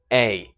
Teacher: if you listen carefully, you'll hear a is actually two vowels.